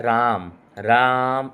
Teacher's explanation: जितना लंबा साउंड जा रहा है, ये आपका प्लुत स्वर को बताता है